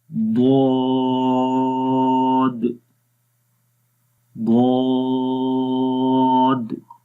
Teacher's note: منہ کو کھول کر پڑھیں گے، آواز کے اندر موٹائی آئے گی، آہستہ سے زبان کا جو بغلی کنارہ ہے، سائڈز ہیں، وہ اوپر والی داڑھوں کی جڑوں کے اوپر لگے گا اور اس کے اندر درازی آتی ہے۔